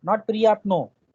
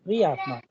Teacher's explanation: प्रियात्मा, हाँ, because the stress is on e, that is why priyatna, not priyatno, because e is under stress, so the sound of o would be like a